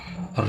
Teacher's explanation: ऋण का उच्चारण मूर्धा से है